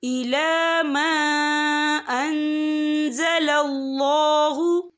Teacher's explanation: और आगे देखिए अन, यहाँ नून साकिन है, नून साकिन के बाद जो है ज़ा आ रहा है और ज़ा जो है इक्फा का वर्ड है, तो हम यहाँ इक्फा करेंगे, नून साकिन की आवाज़ को नाक में छुपाएंगे